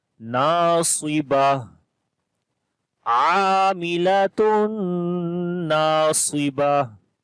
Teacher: And when we stop, so this ta we convert into ha, and this double dhamma we skip also.